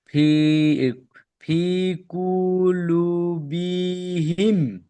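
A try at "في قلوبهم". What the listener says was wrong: বি টান দেবেন না, ফি কুলুবিহিম, ফি কুলুবিহিম।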